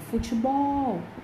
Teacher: futebol, a sílaba tônica é bol.